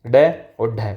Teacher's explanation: ताड़नजात कहते हैं इसलिए, और उत्क्षिप्त कहते हैं, उत्क्षिप्त व्यंजन इसे कहा जाता है। तो जिन वर्णों के उच्चारण करते समय जिह्वा उलटकर श्वास वायु को बाहर फेंकती है, उसे उत्क्षिप्त व्यंजन कहते हैं